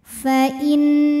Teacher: Lam jalalah atau lam pada lafaz Allah dibunyikan secara tafkhim karena huruf sebelumnya berbaris fathah, maka dibacanya tebal. Pangkal lidah naikkan. Fa innallaha.